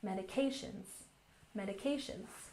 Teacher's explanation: And medications has the primary stress on the third syllable.